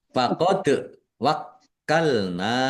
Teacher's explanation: Faqad wakkalna dal sukun bacaan kolkolah dibaca memantul ditampakkan pantulannya.